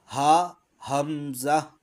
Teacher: ہا، حمزہ یہ دونوں حلق کے سب سے نچلے حصے میں سے ادا ہوتے ہیں، اور ان کی ادائیگی کے شروع میں ایک دمک سی پیدا ہوتی ہے.